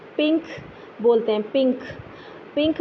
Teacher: دیکھیے اس میں غنہ اس طرح سے ہوتا ہے جیسے کہ آپ اردو میں پنک بولتے ہیں، پنک، پنک بولنے میں، پی آئی این کے پنک بولنے میں آپ این کے لیے اپنی زبان کی نوک اوپر تالو سے ٹچ نہیں کرتے، لیکن پھر بھی آپ این کی آواز نکال لیتے ہیں۔